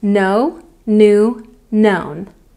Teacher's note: We've got the letter K, but it's silent. Do not pronounce the K in any of these forms.